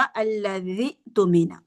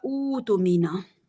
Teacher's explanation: हमज़तुल वसल पे दम्मा आ जाएगा और इसका जो दूसरा हमजा है ना, ये वाव मद्दा में चेंज हो जाता है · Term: मद्दे बदल